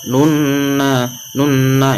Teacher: Nunna ini setelah huruf nun itu terdapat alif lam syamsiah, maka alif lamnya tidak dibaca, tetapi langsung dimasukkan dengan huruf nun karena nunnya itu bertasjid, maka digunakan. Nun termasuk huruf gunah, maka nunnya itu dimasukkan dengan dengung 2 ketukan. Nanya itu berharokat fathah bertemu dengan alif, maka disebut mad tabi'i, dibaca 2 ketukan.